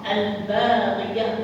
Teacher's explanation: Lam hujung lidah, ba bibir. Maka tak boleh kita baca apa sebab dia jauh. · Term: izhar